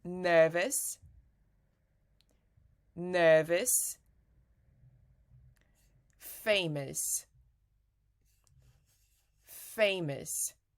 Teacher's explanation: this is the sound of schwa schwa is a sound in English which is not stressed so that means when you say something is not stressed when